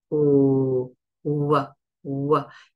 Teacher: the W has no friction it's just a narrowed lip kind of like a football shape · we close a little bit at the back but not closed and we make a little circle with the lips w w and the sound comes as we open w w